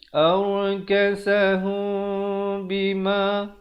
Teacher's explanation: Hukum ikhfa syafawi. Cara bacaannya ialah mestilah mim itu mim yang bibir kita tu hampir bersentuhan saja dengan kadar panjang 2 harakat.